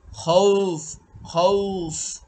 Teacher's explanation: খৌফ খৌফ, এখানে এক থেকে তিন আলিফ পর্যন্ত টান দেওয়া যাবে।